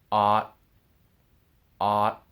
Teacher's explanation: with the ot sound, with the T, the sound stops with my tongue touching the roof of my mouth.